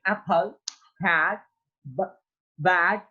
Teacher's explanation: a front unrounded vowel between half open and open position